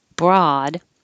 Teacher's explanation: in this word broad you it doesn't follow the rules so it doesn't sound like oh at all it sounds like ah as in hot